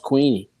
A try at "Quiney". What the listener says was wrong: Boy is no, it's not Queen. It's Quine. Quine.